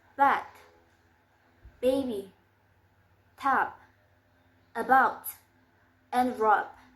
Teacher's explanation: And it's voiced. The place of articulation is labial and the manner of articulation is plosive.